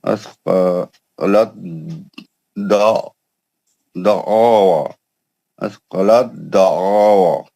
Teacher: تو تے ساکن کا حرف دال مشدد میں ادغام متجانسین ہو گیا